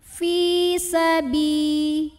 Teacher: Karena ada ya sukun yang sebelumnya baris kasrah, maka huruf ba yang berbaris kasrah kita panjangkan 2 harokat saja